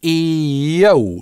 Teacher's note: Почему? Потому что stew-dee, открытый слог, только на /iː/ долгий может закончиться. А дальше /əʊ/ дифтонг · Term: linking [j]